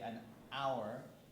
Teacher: I say an hour because there's no h when you say it